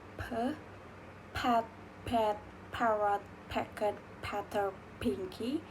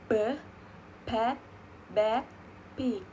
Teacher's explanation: P and b are bilabial plosive that differ in voicing. P is voiceless and b is voiced.